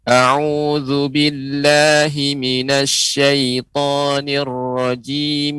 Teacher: ketika ibu membaca rojim jangan terlalu panjang dia cukup menjadi dua harokat saja